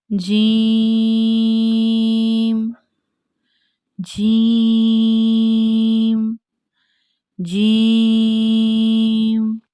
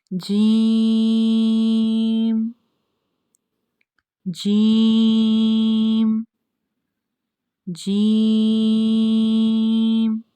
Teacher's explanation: जब जुबान का दरमियानी हिस्सा ऊपर को उठकर तालू से जा मिले तो जीम अदा होता है